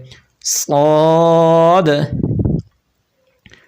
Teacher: صاد کو سیٹی کے ساتھ بھی پڑھیں گے اور اس کو پر بھی پڑھیں گے، یعنی موٹا کر کے بھی پڑھیں گے۔ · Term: سیٹی والے